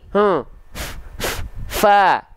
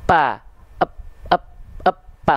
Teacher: kalau yang nempelnya bibir atas dan bibir bawah maka hurufnya enggak akan keluar nafas jadinya huruf P